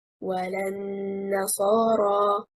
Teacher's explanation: The word وَلَا النَّصَارَى, وَلَا is two words, a conjunctive waw plus a negative lam. The correct stress is on harakatil lam. It gives the correct meaning of the verse, and it gives a lam its function, a negative lam.